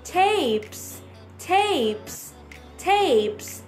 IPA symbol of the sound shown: eɪ